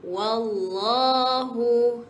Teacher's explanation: tebalkan lam dalam kalimah Allah. Bermakna bacaan kita bukan wallahu tetapi wallahu.